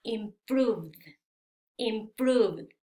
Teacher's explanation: si el último sonido es un sonido que sí tiene vibración, al agregar ed, este ed se pronuncia como d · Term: sonido d